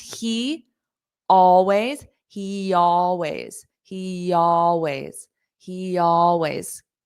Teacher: We can have a little bit of a Y sound to connect.